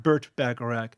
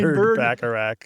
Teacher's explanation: has an unvoiced T sound in it, but also a clue to the name if you voice the T into a D